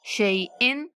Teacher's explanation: शैइन, हमजा पे देर नहीं करेंगे